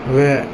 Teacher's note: दंतोष् इसमें दांत और ओठ का व